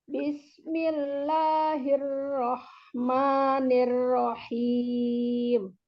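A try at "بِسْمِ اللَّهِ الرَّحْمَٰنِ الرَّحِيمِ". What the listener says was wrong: Ya, coba afwan jangan dibuat seperti itu ya. Nah, itu kalau dibegitukan seperti itu, afwan iramanya ya, afwan ujungnya, penekanan penyebutan hurufnya di ujung itu kemudian jadinya nanti tidak ada yang turun karena ditekan ya. Misalnya rohim, jangan dibuang seperti itu maksud kami. Jadi tetap diluruskan aja. Misalnya, coba Bismillahirrahmanirrahim. Datarkan aja sambil turun im. Tapi mim mim sukunnya maksud kami di ujung itu jangan ditekan.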